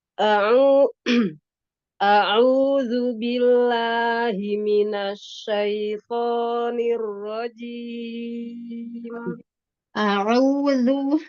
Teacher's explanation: Domanya sempurnakan, monyongnya. Kemudian huruf ain, makhrajnya ditekan ya. Ditekan di katup tenggorokannya. Huruf hamzahnya tidak a, tapi a, biasa a.